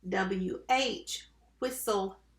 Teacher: a small puff of air that comes out with wind but there's a big puff of air that comes out with whistle